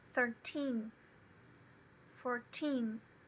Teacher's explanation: a primeira sílaba tem o secundário, o stress secundário. E a segunda sílaba tem o stress primário.